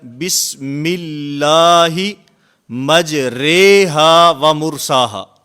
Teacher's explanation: الف کا یا کی طرف جھکاؤ ہو جاتا ہے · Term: امالہ